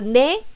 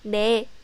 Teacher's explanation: Korean 네 is not so nasal sound. So it sounds like 대. But please know that it's just 네.